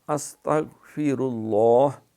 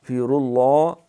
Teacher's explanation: غین پہ قلقلہ نہیں کرنا، سین پہ سیٹی ہے، فیر اللہ، را بھی پر ہے، لفظ اللہ کا نام بھی پر ہے